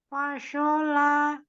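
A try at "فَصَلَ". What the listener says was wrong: Pokoknya tidak monyong juga. Fasola. ucapkan huruf sin ya, dibunyi sa hanya dia mengangkat pangkal lidah. Secara makhraj huruf shad sama dengan huruf sinnya fasola tidak so dibuka. Masih dibunyikan. Fasola.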